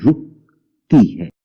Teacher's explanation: جیسے میں نے کہا رکتی ہے، تو رے کے اوپر پیش ہے رو، اور کاف کے اوپر وہ جزم ہوگی جس میں میری آواز آپ کو تھوڑی سی رک کے محسوس ہوتی ہے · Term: ساکن